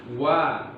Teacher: Huruf waw termasuk huruf syafatan, huruf bibir. Tempat keluarnya adalah syafatani. Ya, keluar dari dua bibir.